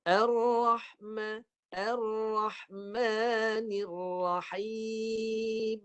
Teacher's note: Mim bibir rapat, suara naik ke hidung.